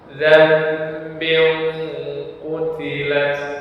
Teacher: dibalik dari ucapan nun mati berubah menjadi mim mati atau mim sukun. Dan dengan merapatkan dua bibir, dan disertai dengan dengung juga. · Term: iqlab